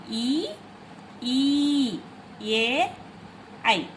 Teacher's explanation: इनके उच्चारण में होठों की आकृति अवृत्ताकार होती है, जैसे सेमी सर्किल जैसे होते हैं।